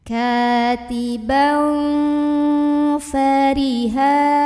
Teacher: Maka tanwin fathahnya ini dibunyikan samar-samar mau bilang fa ya, sambil ada dengungannya. Katiban fa fariha, fari, ro-nya ini dibunyikan secara tarqiq karena ro-nya barisnya kasroh, maka bacanya tipis aja, fari. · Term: ikhfa awsat